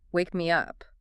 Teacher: the short words like it and me do not have any vocal stress